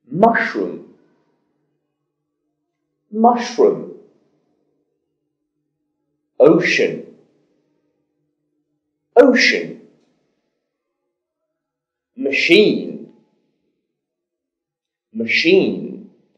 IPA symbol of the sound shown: ʃ